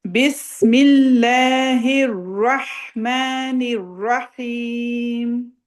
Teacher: اللہ سے پہلے زیر ہے، اللہ کے نام سے تو ہم نے لام لائٹ پڑھنا ہے